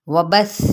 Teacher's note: सा नरमी के साथ, सा की हरकत को लंबा नहीं करेंगे